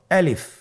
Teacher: আমি যখন আলিফ বলছি এর মধ্যে কোন টান হবে না